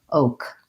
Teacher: In American O, we glide between O and then we relax into the O. So we want a nice long O, and then we just have our K sound, oak.